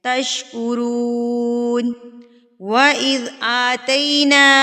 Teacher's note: آ کو کھینچیں گے کیونکہ اس کے اوپر کھڑی زبر ہے تو اس کو ہم ایک حرکت کے برابر کھینچیں گے